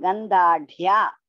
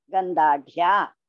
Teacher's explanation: Ga is Alpa Prana. Dha is Mahaprana. Again, Dha is Mahaprana.